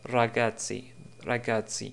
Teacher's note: on va dire que c'est le R roulé de l'italien